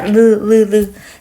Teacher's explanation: 리을은 유음이면서 조음 위치가 어디예요? 치조음이죠. 이 앞니에서 발음을 합니다.